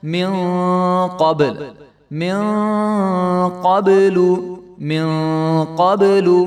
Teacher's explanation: با کے اوپر بھی یہاں پہ کلکلا ہوگا کیونکہ با کے اوپر بھی جزم ہے اور آگے والے لام کو جو ہے ہم لمبا نہیں کریں گے.